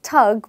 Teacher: Britishers do not have phonemic sound Th, so they often call it thug